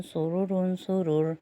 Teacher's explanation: یہاں پر بھی وقف کی حالت میں را ساکن ہو جائے گا، را ساکن سے پہلے را کے اوپر پیش ہے تو را کو موٹا پڑھیں گے